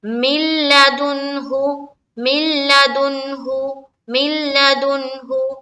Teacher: میم کو لام سے ملایا، نون اسکپ ہو گیا. من لدنہ، یہی مطلب ہے ادغام تام کا.